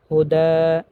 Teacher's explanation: যেমন হুদান যদি ওয়াকফ করা হয় তাহলে হবে হুদা, এক আলিফ পরিমাণ টানিয়ে পড়তে হবে।